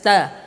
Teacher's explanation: ujung lidah dengan pangkal gigi seri atas